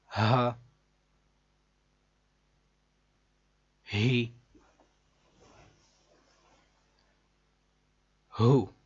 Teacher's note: ہ یہ حلق کے نیچے والے حصے سے ادا ہوتا ہے. ہ جیسے سینے سے ڈائریکٹ آواز نکلتی بغیر کسی جگہ پر رکے ہوئے